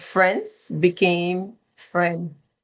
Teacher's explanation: Dropping the S, when we said friends became friend.